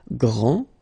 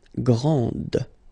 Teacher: This final D is not pronounced. Okay, so grand, and then the feminine form, grande.